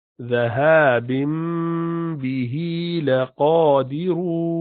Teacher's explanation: noon tanween at the end becomes meme because of ba after it